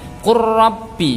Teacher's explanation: Membacanya adalah dimasukkan ke huruf ra-nya tanpa disertai dengung, tetapi dengan adanya penekanan. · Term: idgham mutaqaribain